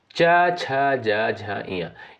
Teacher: च वर्ग के अंतर्गत जो भी वर्ण आपके आते हैं इन सभी का उच्चारण किससे होता है? तालु से यानी तालव्य से होता है।